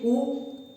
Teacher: ये दोनों होठों काम हो रहे हैं लेकिन टच नहीं हो रहे, रुकावट नहीं आ रही है। हम पा फा बा भा में रुकावट आ रही है, वो ओ में रुकावट नहीं आ रही है।